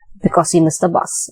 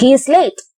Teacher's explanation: because he missed the bus it's in the falling intonation and he is late is in the rising intonation so the rising tone is used in incomplete events and rising